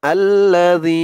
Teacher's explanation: যী এক আলিফ টান হবে, জেরের পরে ইয়া সাকিন